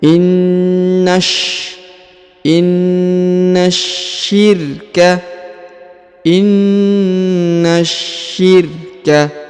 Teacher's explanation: huruf na ditahan dan ditekan karena terdapat tanda tasdid, lalu disambung masuk ke huruf sya ya, langsung disambung masuk ke huruf sya, ditahan dan ditekan karena terdapat tanda tasdid.